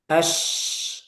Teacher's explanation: Kalau syiddah itu suaranya tertahan kan. Nah, kalau rokhawah suaranya mengalir. Nah, jadi agak panjang.